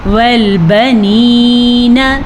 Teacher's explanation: یاد رکھیں جس یا سے پچھلے حرف نیچے زیر ہو تو اسے یا مدہ کہتے ہیں۔ وہ والی یا ہمیشہ کھینچ کے یعنی کہ لمبی کر کے ادا کی جاتی ہے